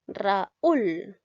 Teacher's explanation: Me doy cuenta que la U suena más. La U es tónica, por lo tanto la tildo. · son vocales diferentes, una es abierta, una es cerrada